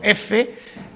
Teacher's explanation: hay un obstáculo, pero solo una fricción, es decir, no impide el aire